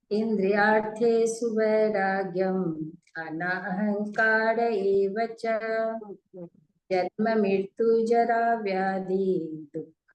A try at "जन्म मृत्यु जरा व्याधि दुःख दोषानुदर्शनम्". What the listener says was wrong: वहाँ वहाँ रोकना नहीं है। हाँ, पूरा एक ही शब्द है, समास है।